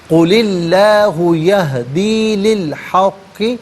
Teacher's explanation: لی کو الحق کے لام ساکن کے ساتھ ملائیں گے، درمیان سے الف یعنی حمزہ کو حذف کیا جائے گا۔ قل اللہ یہدی للحق، اب یہاں وقف کریں گے تو للحق پڑھیں گے۔